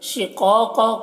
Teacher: قاف کو پر پڑھنا ہے، حروف مستعلیہ میں سے ہے اور یہاں پر الف مدہ ہے تو ایک الف کے برابر کھینچیں گے، اس قاف کو بھی پر پڑھیں گے۔